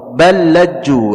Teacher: ada huruf lam yang sukun, kemudian ada lam lagi di depannya, maka langsung diidghamkan kepada lam yang setelahnya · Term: idgham kabir